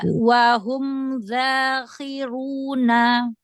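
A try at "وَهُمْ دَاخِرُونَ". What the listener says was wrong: Ya, jangan ada celah ya. Dalnya itu syiddah dan jahar. Wahum dakhiruna.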